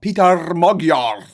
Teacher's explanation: Short A and a rolled R. Another rolled R.